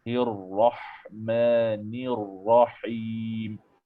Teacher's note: Kurang pada ra itu, Tuan. Ra kena tebal. Ra kena latihan.